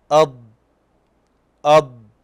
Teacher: طيب قلنا يظهر صوت الضاد برخاوته ويستقر في الحافة عند التصاقها بالأضراس العليا مع امتداد الصوت من بداية الطرف إلى نهاية الحافة. الصوت في الضاد يبدأ قويا ويبدأ يتخافت قليلا حتى يختفي، نقول أض أض، والمدة الزمنية التي يستغرقها الصوت في الضاد أكثر من المدة الزمنية التي يستغرقها الصوت في اللام. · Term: الاستطالة